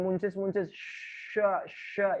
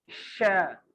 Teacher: Tengah lidahnya nempel ke rahang atas